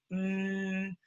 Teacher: close your mouth mmm because it's coming out the nose mmm and so the a becomes a nose sound man ham